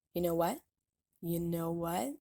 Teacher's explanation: says you know what rather quickly with a stop t